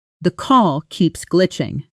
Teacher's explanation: notice how keeps often loses a clean sharp K sound in fast speech blending gently into the next word. So it comes out closer to keeps glitching.